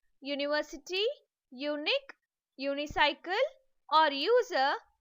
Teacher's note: even though the first alphabet is a vowel, the sound produced is yo, and hence the article a should be used before them.